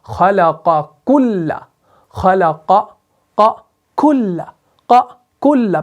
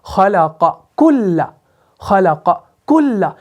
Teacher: سے یہ سیم ہے، لیکن صفات کے اعتبار سے فرق ہے، قاف آپ کا مفخمہ ہے، کاف آپ کا باریک ہے